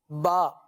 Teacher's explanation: बा का मखरज ये है कि दोनों होठों के तर हिस्से से ये हर्फ अदा होता है